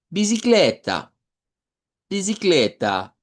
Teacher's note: la A final la debemos hacer sonar como una A media para que se diferencie. Nosotros decimos bicicleta, pero en lengua portuguesa sería bicicleta, bicicleta, con esa hacia el centro.